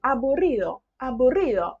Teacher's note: A gente não fala esse D muito marcado. Ele deu a diquinha lá que a gente vai fazer ele mais leve.